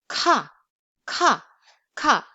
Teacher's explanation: It's never voiced and it's pronounced with a strong puff of air.